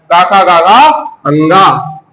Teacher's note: कंठ से आपका उच्चारित होता है पूरा क वर्ग